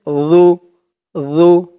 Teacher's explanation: জিহ্বার মাথা উপরের দাঁতের মাথার সাথে লাগবে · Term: জালের উচ্চারণটা